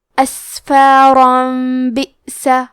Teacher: قلب کا معنی ہے بدل دینا، تو ہم تنوین کو ہلکی میم میں بدل کے اور غنہ کے ساتھ یہ حکم کو ادا کریں گے